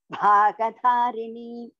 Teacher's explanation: Dha is Mahaprana. Ga is Alpaprana. Dha is Mahaprana.